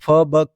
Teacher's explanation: फ और ब बोल के देखो, दोनों होठ आपस में मिलेंगे, इसको ओष्ठ बोलते हैं।